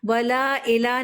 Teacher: حمزہ کے نیچے کسرہ ہے، ہم نے اس کو ای کی ساؤنڈ سے پڑھا ہے، اے نہیں